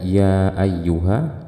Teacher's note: ini disebut dengan Mad Jaiz munfasil panjangnya 4 atau 5 harokat